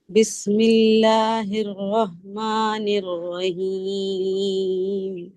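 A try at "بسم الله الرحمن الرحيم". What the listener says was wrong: الرحیم میں جو ہا ہے اس کو حلق کے نیچے والے سے لگا. حلق کے تین حصے ہیں.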